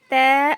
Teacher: जुबान की नोक को सामने के दो दांतों के जड़ में लगाने से तै अदा होता है। पिक्चर में देखिए आप, यहाँ पे अच्छे से दिख रहा है यहाँ पे कि जुबान की जो नोक होती है ना, उसको कहाँ पे लगाया है, ऊपर के दो दांतों के जड़ में लगाया। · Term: त का मखर